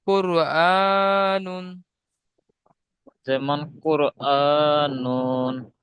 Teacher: র সাকিনের পূর্বে পেশ আছে, পেশ র কে পুর করে পড়তে হবে।